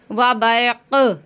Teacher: یہاں پہ آواز کو پلٹ دیں گے کیونکہ یہ قاف ساکن ہو جائے گا جب ہم رکیں گے تو اس کی آواز پلٹ کر آئے گی